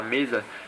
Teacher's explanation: quando você fala mesa, seus lábios se encostam, é impossível você falar me sem encostar os lábios e za sem pelo menos chegar perto do céu da boca com a língua.